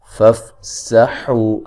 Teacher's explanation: حا کو اس کے مخرج سے نکالیں گے جو کہ وسط حلق ہے